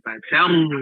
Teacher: ro-nya juga tebal dan bo-nya juga tebal